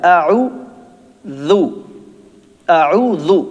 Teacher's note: اوپر اور نیچے کے دانت، زبان تھوڑی سی ان سے باہر نکالیں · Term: ذو